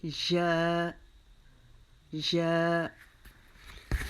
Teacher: یا کو بھی اپنے درمیان میں زبان کا جو حصہ ہے ہمارا اس کو ہم اوپر تالو کے درمیان سے لگا کر ادا کریں گے